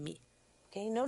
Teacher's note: Note que não há explosão alguma. Seguramos os lábios juntos e prolongamos o som.